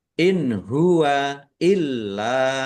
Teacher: nun sukun bertemu dengan huruf ha. Bacaan izhar dibaca jelas. Lamnya ada tasdidnya dibaca dobel ditekan biar tampak dobelnya.